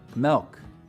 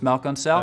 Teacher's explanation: Some front vowels get lowered before L sounds.